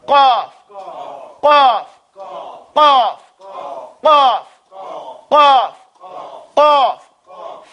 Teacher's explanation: It pops in the back of your mouth.